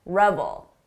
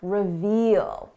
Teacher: Notice the difference in the vowel sound. This is a short sound, ul, revel. Long sound, reveal.